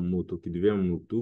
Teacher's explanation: Le O peut devenir U comme dans moto qui devient moutou